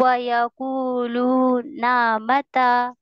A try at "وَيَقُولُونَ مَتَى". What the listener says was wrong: ابھی بھی کھینچ رہا ہے.